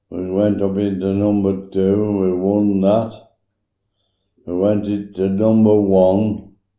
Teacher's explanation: Those words are bold in the transcript, so you can hear his variation of productions of strut vowels as having either a very footy quality or sounding more like a southern strut variant